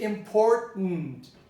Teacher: you pronounce the er the r as a retroflex